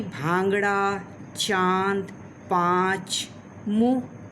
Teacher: अनुनासिक, जिसको हम चंद्र बिंदु कहते हैं, यह नाक एवं मुंह दोनों से हवा निकले, उसे हम अनुनासिक कहते हैं, जैसे कि भांगड़ा, चांद, पाँच, मुँह आदि।